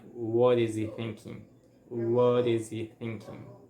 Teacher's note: And here it happens that the what, like the T is between two vowel sounds, so it's gonna sound like a flap T, and it's gonna sound like what is, okay?